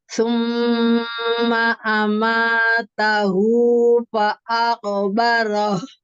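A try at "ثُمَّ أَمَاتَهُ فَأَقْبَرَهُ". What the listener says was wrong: Ya, Masya Allah, tabarakallah, bagus.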